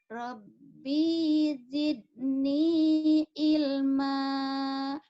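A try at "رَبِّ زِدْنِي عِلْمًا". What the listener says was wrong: Rabbi pendek. Rabbi zidni. Rabbinya pendek ya. Rabbi zidni ilma.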